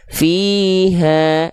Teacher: jelaskan vokal A-nya, tipiskan pelafalannya ya